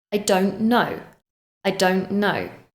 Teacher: Don't has a t, but again, we don't pronounce it. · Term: elision